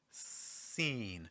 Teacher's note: For seen, we get that snake-like hissing S.